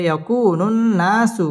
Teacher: নুনের মধ্যে তাসদিদ আসছে নুন ওয়াজিব গুন্নাহ করে পড়তে হবে